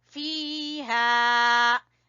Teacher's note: فا کو کھینچیں گے یا مدہ کی وجہ سے، اور ہا کو الف مدہ کی وجہ سے